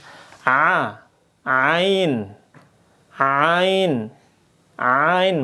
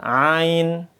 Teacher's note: Makanya dia makhrajnya keluarnya di mana? Dia tenggorokan.